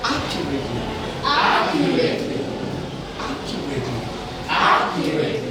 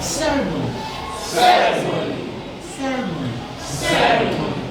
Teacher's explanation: Four-syllable words stressed on the first syllable. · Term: word stress